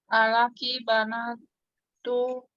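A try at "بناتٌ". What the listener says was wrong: tun. Tun. Tanwin. Banatun.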